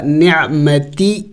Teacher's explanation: نع عین حروف حلقی میں سے ہے. نع وسط حلق سے ادا ہوگا عین اور جم کر کے پڑھنا ہوگا